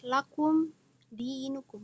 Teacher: Nah, di sini mim sukun bertemu dengan huruf dal juga dibaca jelas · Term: izhar syafawi